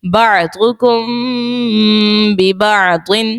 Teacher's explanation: میم ساکن کے بعد با ہے، اخفاء شفوی کا قاعدہ ہوگا اور غنہ بھی کریں گے.